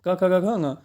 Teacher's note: ये आपका क वर्ग कंठ से बोला जाता है